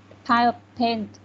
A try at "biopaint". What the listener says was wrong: Okay, bio paint, nhưng mà pile paint nha, không bật hơi. Bio paints.